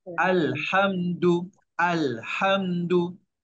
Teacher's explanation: Jelaskan mim tanpa dengung. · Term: izhar syafawi